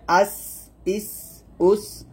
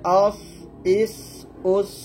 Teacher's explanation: সদ মোটা করতে হবে। এখানে সিন এবং সদের মাখরাজ যদিও এক, সিন পাতলা সদ মোটা।